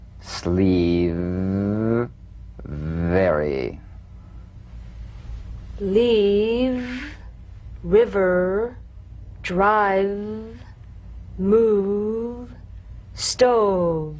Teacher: You'll feel a gentle, dark, buzzing vibration on the lower lip. All suggestion of the F must be out of there, otherwise your V sounds like an F.